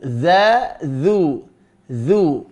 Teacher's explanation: ujung lidah mengenai ujung gigi seri atas